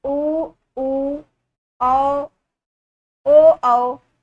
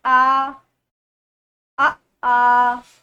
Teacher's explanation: उच्चारण करने पर ओठ गोल हो जाते हैं, तो उसे बोलते हैं वृत्तमुखी। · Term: वृत्तमुखी स्वर